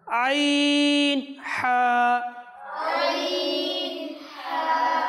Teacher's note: এই দুইটি হরফ উচ্চারণ হয় হলক তথা কণ্ঠনালীর মধ্যংশ থেকে উচ্চারণ হয় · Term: হরুফে হালাকিয়া